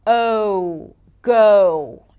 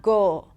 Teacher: I always love imagining adding a little W at the end for the O as in go